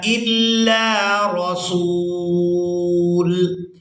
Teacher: حمزہ کو لام مشدد کے ساتھ ملائیں گے، لام کو الف مدہ کی وجہ سے کھینچ کر ادا کریں گے۔